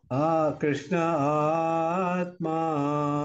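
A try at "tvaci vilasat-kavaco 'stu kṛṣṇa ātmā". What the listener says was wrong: Not ah. We need not expend ah. We need to expend the ah later.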